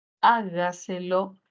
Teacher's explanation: mayor fuerza de voz al inicio y Tendremos una palabra sobreesdrújula